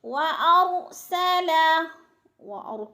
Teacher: را ساکن سے پہلے زبر ہے تو را پر پڑھی جائے گی